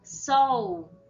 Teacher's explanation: O som e o formato, como nós articulamos a nossa boca, é como se fosse algo redondo